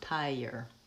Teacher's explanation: We do the same thing in the word tire, tire. Between the I and the ire, we have this y sound